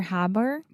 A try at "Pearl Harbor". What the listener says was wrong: Pearl Sounded like you were trying to say pure bar. Yes, that RL combination can be quite difficult for a lot of Brazilians and Portuguese speakers.